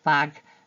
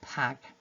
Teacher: the unvoiced part of the pair is used rather than the more appropriate voiced part of the pair